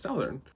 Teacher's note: it comes out more like southern, like there's more ow in it